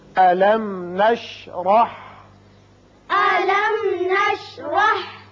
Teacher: میم ساکن یہاں اظہار شفوی ہوگا اور را کے اوپر زبر ہے، اس کو پر کر کے پڑھیں گے